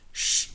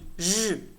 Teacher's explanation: Next, we have post-alveolar fricatives sh and zh. Sh is voiceless, whereas zh is voiced.